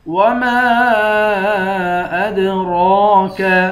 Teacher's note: میم کے بعد الف ہے، الف پر مد ہے، اس مد کو 3 الف کے مقدار کھینچ کر پڑھیں گے